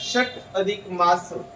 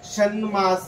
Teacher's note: प्रथम व्यंजनाच्या पुढे कोणतही अनुनासिक आलं तर लक्षात ठेवायचं प्रथम व्यंजनात प्रथम व्यंजन ज्या गटातला आहे त्याच गटातले अनुनासिक येऊन संधी होते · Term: अनुनासिक संधी